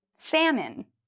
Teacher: don't worry about the L it's silent